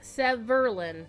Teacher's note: His dev name is pronounced Severlin. The emphasis is on the second syllable.